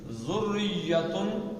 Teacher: را میں تھوڑا سا ارتعاش آتا ہے زبان کے اندر، لیکن زیادہ نہیں کرنا، ہلکا سا